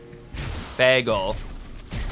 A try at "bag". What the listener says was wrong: Bag. So yeah, you're saying like B-E-G in my to my ears.